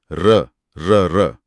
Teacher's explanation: आपकी जीभ में कंपन या लुड़कन सी महसूस होगी। र इसीलिए इसे लुंठित कहते हैं।